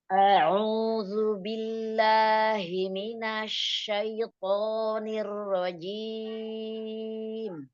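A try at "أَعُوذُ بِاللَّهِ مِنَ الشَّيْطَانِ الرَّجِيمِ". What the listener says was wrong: Hamzahnya dijelaskan a ya. Huruf ain. Katup tenggorokan ditekan. A'udzu billahi minasy syaithanir rajim. Nirrajim. Ar-ra dilamain dikit.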